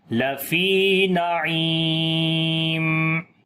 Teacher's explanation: جزم ہے، اس سے پہلے زیر ہے اس وجہ سے نعیم، عین کو گلے کے درمیان والے حصے سے پڑھیں گے، لمبا بھی کریں گے